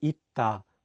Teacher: the 쌍시옷 is in the 받침 position, so it's pronounced as 트.